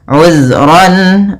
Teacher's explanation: Kemudian pada lafal ran bertemu dengan alif atau hamzah, kita namakan dengan bacaan izhar halaqi. Suara tanwinnya jelas